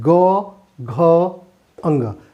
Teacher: और सघोष यानी हम जब उच्चारण करते हैं, जैसे उच्चारण करके देखेंगे ग, घ, अंग, इसमें घोष के साथ यानी गूंज के साथ हवा जो है बाहर निकलती है